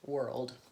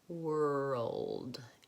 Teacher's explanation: And so even if you can say a good American R, sometimes when you're moving in and you're trying to say it together with the L sound or in a blend, there's three sounds here, ol, and d. It's challenging to move from that back R to that front L.